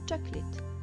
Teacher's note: À l'oral, cela se prononce chocolate. Ici, le O du milieu devient quasiment inexistant et le A final devient un I.